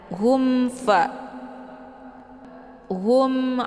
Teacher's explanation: syafawi mim sukun bertemu dengan Ain juga dinamakan dengan izhar syafawi cara baca mimnya dibunyikan secara jelas atau jelas bunyi m-nya cukup ditekan saja tidak perlu ditahan · hukum bacaan izhar syafawi dibacanya jelas, tiada berdengung.